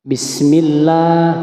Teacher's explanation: saja auzubillahiminasyaitanirrajim Bismillahirrahmanirrahim perhatikan lafaz basmalahnya ya di sini dibaca bismillah huruf lamnya dibaca panjang pada lafaz Allah karena situ adalah lam yang bertanda baca fathah ya fathah tegak